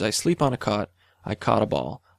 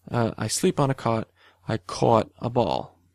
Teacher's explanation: on the East Coast, it's much less common to have those two vowels merged, so you actually produce a different vowel in that environment. So you say, I sleep on a cot, I caught a ball.